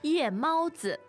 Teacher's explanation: that's fourth tone, first tone, and then neutral tone. 是的,夜猫子 那今天我们的对话呢,就是一个夜猫子的生活 Yeah, so let's find out what this night owl or night cat has done.